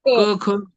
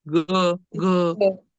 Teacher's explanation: उच्चार होणारी व्यंजन आणि मृदू म्हणजे जास्त जोर लावावा लागत नाहीये क ख जास्त जोर लावावा लागतो तसं ग घं याला कमी लागतोय जोर